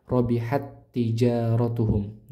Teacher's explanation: Jadi, di sini pertemuan antara dua huruf yang sama makhraj dan sama sifat itu sama-sama bentuknya huruf ta. Maka ee ta pertama sukun ini dimasukkan ke ta yang kedua di huruf kedua